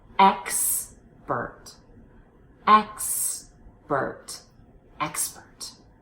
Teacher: X is a letter but it's not a sound and here in expert it's the KS so hit both consonants